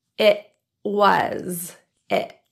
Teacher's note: this is a stop in the glotus instead of a true T pronounced with the tongue tip the result is a sound more like it was it it